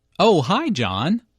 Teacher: notice the rising intonation here Alice is excited to hear from John